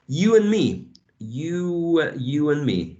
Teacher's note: you need to mention there is an elision of d in and